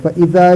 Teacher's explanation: دو سامنے والے اوپر دانتوں کی سر نیچے ہونٹ سے لگا کر ادا ہوتا ہے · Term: فا